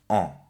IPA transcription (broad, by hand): ɑ᷈